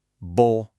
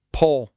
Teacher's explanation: Unaspirated. No puff of air.